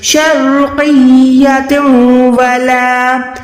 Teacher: را ساکن ہے، اس سے پہلے زبر ہے، تو یہاں پر آپ نے را کو موٹا ادا کرنا ہے